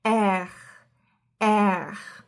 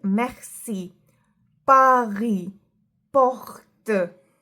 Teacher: this is a sound which comes from the throat and this sound doesn't exist in English. So when you try to clear your throat, for example, that is the sound which forms when you say this letter.